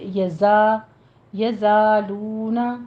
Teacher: یزا میں بھی زائی کی آواز، یزا سین نہیں آنی چاہیے